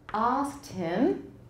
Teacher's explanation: remember this with the sk and don't say axed when you're speaking american